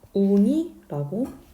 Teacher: 그런데 울다, 울고 이럴 때는 이 용언의 어간이 그대로 있는데 여기에 니은으로 시작하는 어미가 오거나 하면은 울리가 아니라 리을이 탈락해서 우니라고 발음한다는 거예요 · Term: 리을 탈락